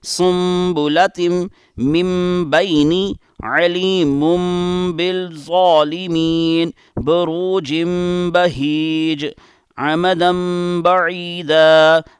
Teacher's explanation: ہم نے نون کی آواز یا تنوین کی آواز کی بجائے میم کی آواز یا پھر با کی آواز کے ساتھ اس کو ملا کر پڑھا ہے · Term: بدلنا